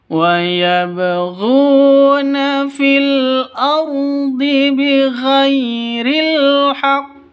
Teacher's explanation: Ini alif lam takrif alqamariyah tandanya sukun. Ardhi rnya tebal ya. Ro tafkhim.